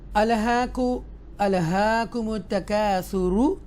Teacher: extra stress کے ساتھ تا مشدہ کو ہم پڑھیں گے